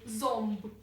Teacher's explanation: оносове Ми будемо читати як ом бо воно стоїть перед приголосною губною б